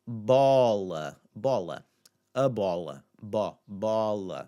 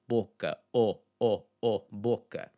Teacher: Again, these sounds aren't always going to be the exact same sound, but in that placement, it's largely going to have this more open sound, this aw, boca, boca. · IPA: [ɔ]